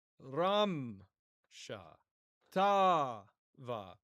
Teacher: and so the stress is on the first syllable of both words. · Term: retraction of stress